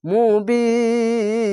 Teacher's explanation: শেষ অক্ষরে সাকিন দিলে এক দুই তিন তিনটি অক্ষর আছে তার জন্য এখানে মাদ্দা আরজি হচ্ছে তিন আলিফ টেনে পড়ছি